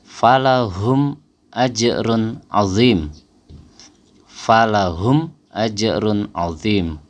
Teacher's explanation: Contoh misalnya huruf mim mati bertemu dengan alif atau hamzah pada bacaan falahum ajrun azim, falahum ajrun azim. Jadi kita membacanya jelas, nggak ada dengung sama sekali. Membacanya nggak boleh diputus ya, nggak boleh ada jeda terlalu lama, nggak boleh diputus. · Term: izhar syafawi